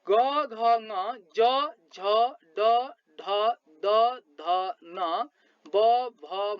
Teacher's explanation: स्वर तन्त्री नजिक भई कम्पन भएर उच्चारित हुने वर्णलाई सघोष व्यञ्जन वर्ण भनिन्छ